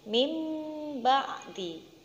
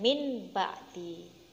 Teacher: suara nun sukun nya diganti dengan suara mim sukun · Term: iqlab